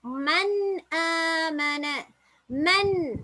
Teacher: சுகூன் வச்ச நூனுக்கு பின்னால பாருங்க ஹம்ஸா வந்திருக்குது ஹல்கை தொண்டையிலிருந்து வரக்கூடிய எழுத்து அப்ப நாங்க இந்த சுகூன் வச்ச நூனை வந்து தொண்டைக்கு கொண்டு போற சந்தர்ப்பத்தில் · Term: இல்ஹார்